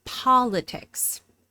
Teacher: The first syllable is stressed, and this is a short O